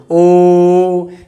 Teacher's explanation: उच्चारण स्थान कहां से होता है कंठ और होंठ देखो ओ इसमें कंठ भी है है ना और होंठ भी गोल हो रहा है इसलिए क्या है कंठ आस्था हम कंठ और ओस्ट से है